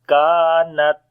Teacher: So first we make shiddat quality, the discontinuation of our sound, and then we release our breath